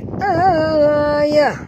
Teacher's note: Tapi kalau kita berhenti waqaf, bunyi yang keluar ialah huruf ha, ya. Bukan huruf ha tapi huruf ha. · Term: ta marbutah